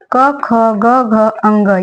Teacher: क वर्ग को हम कंठ ध्वनि से बोलते हैं